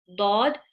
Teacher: side of the tongue, touching the molar teeth